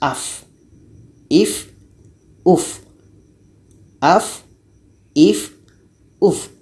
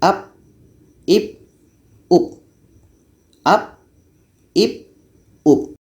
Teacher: Jadi huruf fa ini sifatnya hamas, berangin.